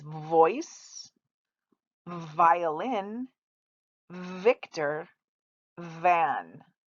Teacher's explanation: victor is a fricative it does not stop it vibrates